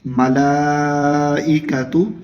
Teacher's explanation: لام کے اوپر ایک بڑی مد ہے جسے 5 الف کے برابر کھینچ کر پڑھا جاتا ہے